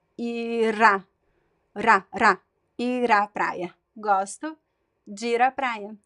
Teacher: when a word ends with the R and the next word starts with a vowel, we also make a connection. And the R sounds like R, and you connect.